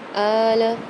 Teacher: الف کے اوپر کھڑا زبر آ رہا ہے، اس کو ایک الف مقدار کھینچیں گے